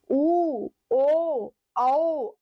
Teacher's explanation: वे स्वर जिनका उच्चारण करते समय ओष्ठ गोल हो जाता है। अर्थात वृत्त जैसी आकृति ग्रहण कर ले उसे बोलते हैं वर्तुलाकार स्वर।